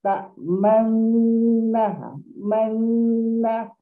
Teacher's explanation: kat sini kita bacaan ismam ataupun kita muncungkan sikit mulut